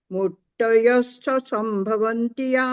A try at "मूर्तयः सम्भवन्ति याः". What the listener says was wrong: हाँ, आप भी डबल डबल सा बोल रहे हैं। मूर्तयः संभवन्ति याः।